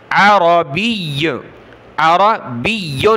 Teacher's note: یا کو سخت کیا، جب رکیں گے تب بھی سختی کے ساتھ رکنا ہے